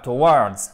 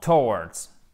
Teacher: Accent unique sur la première syllabe